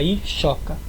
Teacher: esse s quando ele vem depois da letra i aparece um I depois aparece o s esse S vira x